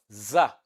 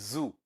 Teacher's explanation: is voiced alveolar fricative